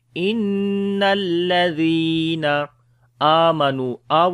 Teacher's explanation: إن الذين, there is a shad sign on the noon, we make gunna. Zal we read in soft sound and we long due to yamadda. Inna alladhina amanu, we long due to standing fatha on it.